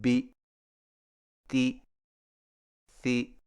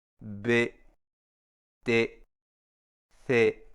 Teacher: زیر کو معروف پڑھیں، جو کہ انگریزی کے حرف بی سی ڈی ای جی سے ملتی ہو، یعنی زیر والے حرف میں آواز دبی ہوئی آنی چاہیے